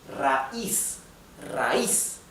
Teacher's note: They are separated in different syllables. And the I, which is the weak syllable, the weak vowel, is where the accent or the stress or the intonation goes